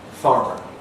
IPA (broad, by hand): ˈfɑːrmər